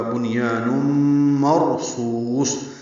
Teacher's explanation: را پر پڑھیں گے کیونکہ اس سے پہلے زبر آئی ہے. صاد بھی پر پڑھیں گے کیونکہ حروف مستعلیہ میں سے ہے. · آگے تنوین کے بعد میم آنے کی وجہ سے نم میں ادغام ہے، یہ ادغام ناقص ہے، غنہ ہوگا